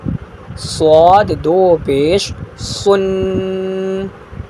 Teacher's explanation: صاد دو پیش سن، منہ کو گول کر کے پڑھیں گے